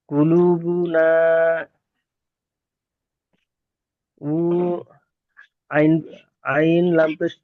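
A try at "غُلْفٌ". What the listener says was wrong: আইন নয়।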